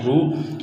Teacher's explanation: را کو موٹا کرنا ہے، را کے اوپر پیش ہے